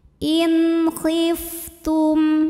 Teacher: dengan jelas bunyi n-nya jelas tidak perlu ditahan inif ini fnya keluarin angin ya karena ada sifat hamsnya